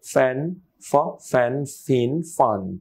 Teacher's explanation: এই ফ এন্ড ভ এই দুইটাতে ঠোঁট মিশবে না কিন্তু এই দুইটাতে বাংলায় ঠোঁট মিশে যায় ফ এন্ড ভ রাইট